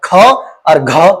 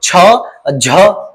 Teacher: ख और घ हवा निकल रही है ज्यादा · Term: महाप्राण